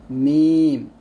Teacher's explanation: 2 ঠোঁটের শুকনো জায়গা হতে একটি হরফ উচ্চারিত হয়, মিম। আর 2 ঠোঁট গোল করে সামান্য খোলা রেখে একটি হরফ উচ্চারিত হয়, তা হচ্ছে ওয়াও এরকম। · দুই ঠুটের শুকন জায়গা হতে একটি হরফ উচ্চারিত হয়